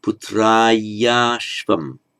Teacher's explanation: the a merges with the following a to become a long a